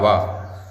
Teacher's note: माने दंत भी और ओष्ठ भी, तो दांत और ओष्ठ दोनों को मिलकर के वा बोल पाते हैं। वा बोलने का प्रयास करेंगे तो आपको पता चल जाएगा कि दांत के साथ साथ ओष्ठ का प्रयोग भी इसमें हो रहा है। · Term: दंतोष्ठ